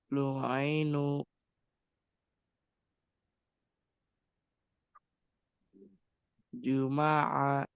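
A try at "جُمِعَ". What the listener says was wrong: Maaf, harokatnya.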